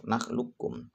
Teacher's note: Nakhlukum, tidak boleh dibaca nakhlukum, maka harus diidghamkan kepada kaf, nakhlukum.